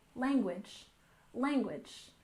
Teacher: And language stresses the first syllable, language, language.